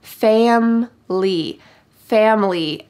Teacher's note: In fast English, we drop the middle I.